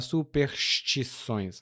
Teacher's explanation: quando a gente fala muito rápido, a gente suprime a letra S, ou melhor, o som de S. Então, algumas pessoas vão falar superstições assim ou superstições.